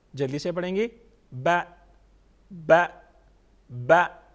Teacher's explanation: half الف کے برابر زبر کو ہم پڑھتے ہیں